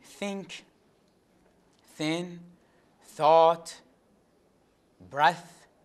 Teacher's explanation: the tongue touches the teeth usually just behind the front teeth above · it is voiceless dental fricative